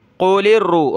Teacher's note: را کو سخت کرنا ہے، لام کو نہیں ، یعنی قل اس طرح نہیں پڑھنا، لام کو سختی کے